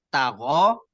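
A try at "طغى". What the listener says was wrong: Togo bukan tago. Pangkal lidahnya, Pak.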